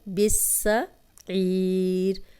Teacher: شد والا حرف ہمیشہ پچھلے زیر زبر پیش کے ساتھ ملا کے پڑھا جاتا ہے۔ سین سیٹی والا ہے